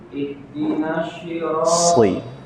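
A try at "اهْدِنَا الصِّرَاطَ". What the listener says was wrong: Sri. Mirip seperti sin tapi dia tebal. Sri. Bukan ke shin. Ihdinas shi, tidak. Sri. Bukan shi tapi sri, ujung lidah. Sri.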